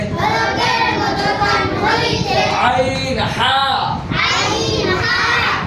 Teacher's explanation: 2 নম্বর মাখরাজ, হলকের মধ্যখান হইতে